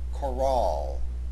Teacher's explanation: Notice, although it looks like the word choral, C-H-O-R-A-L, it has an E at its end. Therefore, the proper pronunciation of this word has the accent on the second syllable